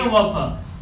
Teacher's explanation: उच्चारण स्थान, ये दांत और ओष्ठ को मिलाकर होते हैं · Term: दंत ओष्ठ